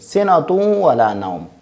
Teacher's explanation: ہم اس دو پیش کو واو میں ملائیں گے، اس کو واو میں مدغم کریں گے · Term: ادغام